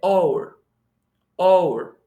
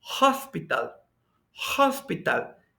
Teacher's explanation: Esa H no es muda porque está sonando como J.